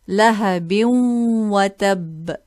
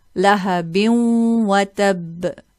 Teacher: We merge this kasra tanween into the waw.